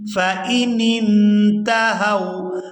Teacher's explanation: نون کو نون ساکن کے ساتھ ملا کر ادا کریں گے